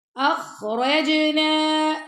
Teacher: جیم پہ ہم کلکلا کر رہے ہیں